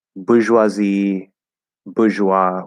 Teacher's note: it's boo or buh with a high schwa